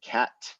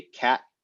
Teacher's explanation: final t's it's why instead of saying cat we say cat we don't actually release the t at the end · We don't actually release the T at the end. So it kind of just, it sounds like just like a cessation of the flow of the word, right? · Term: unreleased, unreleased T